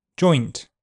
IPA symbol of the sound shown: ɔ̆ɪ